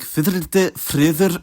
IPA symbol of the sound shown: ð